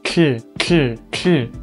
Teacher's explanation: I have the voiceless alveolar lateral affricate